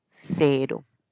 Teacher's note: la el ápice de la lengua se acerca a los alveolos y hace un solo contacto